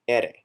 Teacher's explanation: a quick flap of the tongue on the roof of the mouth, just behind the teeth.